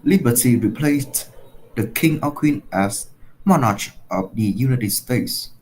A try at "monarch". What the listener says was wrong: Yep, and it's not monarch, it's monarch. It's a k sound, monarch. Monarch.